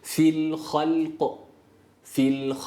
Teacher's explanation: fili değil dilimizi hemen bırakmıyoruz